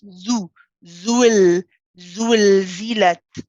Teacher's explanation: You notice you say zu. You circle the lips. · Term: circling of the lips